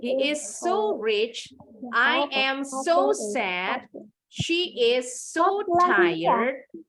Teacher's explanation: Jadi so-nya agak ditekan